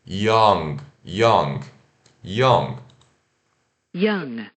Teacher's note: Então se escreve Y-O-U-N-G, young, mas se pronuncia o I, né, rápido e esse aqui o V de ponta cabeça, que é o O relaxado, Ió. E o N que você trava com a língua no céu da boca.